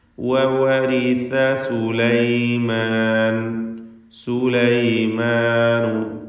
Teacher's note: വവരിസ സുലൈമാൻ, അതിൽ സാ വന്നിട്ടുണ്ട്. സാ നാവിൻ്റെ തലപ്പിൻ്റെ മുകൾ ഭാഗം, പിന്നെ മേലെ മുൻപല്ലിൻ്റെ അറ്റവും, ഇവ രണ്ടും കൂടി ചേരുമ്പോഴാണ് സാഇൻ്റെ ഉച്ചാരണം ഉണ്ടാകുന്നത്.